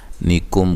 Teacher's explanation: کاف کو باریک، میم ساکن کا اظہار ہے، غنہ نہیں کریں گے۔